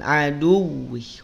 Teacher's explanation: wawunya tidak perlu ditahan. Cukup tekan.